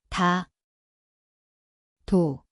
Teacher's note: 나, 누, Here is the letter. 디귿, It sounds like D/T. The place is the tongue tip released.